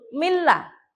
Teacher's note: ada nun sukun ketemu lam masuk tapi tidak mendengung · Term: idgham bila